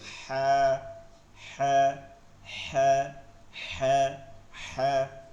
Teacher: বাংলা হা বলার সময় চাপ দিয়ে নিয়ে যাব এবং হালকা আওয়াজে উচ্চারণ করব ফিসফিস করে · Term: হলকের